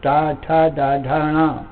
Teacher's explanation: ये मूर्धा में ठोकर मार करके और फिर शब्द निकल रहे हैं। जोर मूर्धा में मूर्ध सिर में पड़ता है।